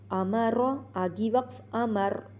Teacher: یہاں پر میم کو ناک میں نہیں جانے دینا، अमर आगी वक्फ अमर, रा को वैसे भी मोटा करना है, हालत वक्फ में भी मोटा करना है।